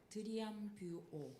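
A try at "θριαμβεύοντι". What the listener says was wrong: 여러분, 드리앙이 아니고 약간 뜨 발음이 나요.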